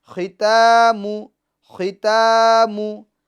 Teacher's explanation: میم پر پیش ہے اس کو نہیں کھینچیں گے، ختامو، ختامو، ہا الٹا پیش ہو، ختاموہو، ختاموہو، ٹھیک ہے۔